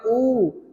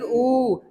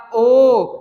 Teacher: वर्णों को बोलने के बाद हमारे होठों की स्थिति कैसी हो जाती है गोलाकार